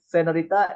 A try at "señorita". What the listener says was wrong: Señorita. It's not senorita. It's señorita. So they say nya here, señorita.